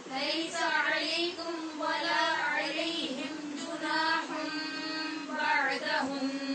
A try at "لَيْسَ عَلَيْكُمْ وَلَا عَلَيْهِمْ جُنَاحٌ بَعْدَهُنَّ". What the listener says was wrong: میں ہر روز آپ کو مشق کرواتے ہوئے یہ بتاتی ہوں کہ جب میم کے بعد واو آئے تو توجہ سے وہاں اظہار کرنا پڑتا ہے. اب آپ کی آواز یہاں ادغام کی آ رہی ہے، علیہم کی آواز ہے. لیس علیکم ولا علیہم جناح بعدہن.